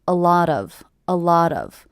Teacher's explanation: with the stress happening on the middle word